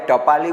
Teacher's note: જીભનું ટેરવું એ તાળવે અડે